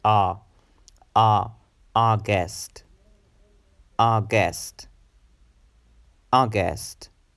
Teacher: The next month, August, August, August, August. The stress, the emphasis is on the first sound